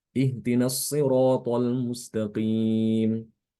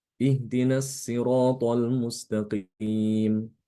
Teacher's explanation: Shad itu dibaca tebal dan Sin itu dibaca tipis · Perbedaan huruf shad dengan sin itu hanya perbedaan tebal dan tipis ya. Makhraj keduanya itu sama. Hanya saja sifatnya berbeda ya antara shad dengan sin.